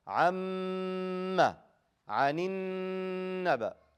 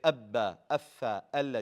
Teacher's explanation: You hold the mim and noon when they have a shadda. You don't do that with any other letter.